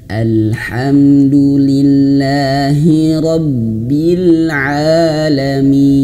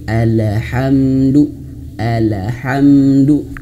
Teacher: Nah, al di sini alhamdu pertama al huruf lam yang sukun di sini jangan dipantulkan